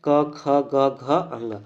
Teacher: इनका उच्चारण कंठ के स्पर्श से होता है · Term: क वर्ग